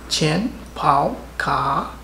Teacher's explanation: isang fourth tone at dalawang third tone